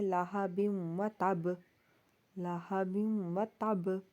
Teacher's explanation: تب کے با کے اوپر شد ہے تو ہم نے با کو زیادہ ہلانا ہے، زیادہ شدت کے ساتھ پڑھنا ہے، ٹھیک ہے، زیادہ ایکو ہونی چاہیے۔ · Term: قلقلہ اکبر